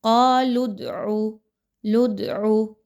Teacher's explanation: یہ جو دال کی تھوڑی سی آواز آئی ہے اسی کو قلقلہ کہا جاتا ہے